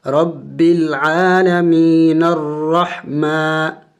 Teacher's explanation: اگر وقف نہ کرے، وقف کے بغیر پڑھے تو پھر نون کو را کے ساتھ ملانا پڑے گا